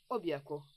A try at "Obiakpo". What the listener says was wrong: Au fait, ta façon de dire Obiakpo, tu sais, j'aimerais que tu utilises une voix un peu plus romantique pour prononcer ce Obiakpo. Pas Obiakpo comme si on allait à la guerre.